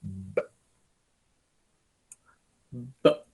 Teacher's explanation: And the trick behind that is which parts of your mouth are you using? When you're going to say B, that's called the bilabial because you are using both of your lips.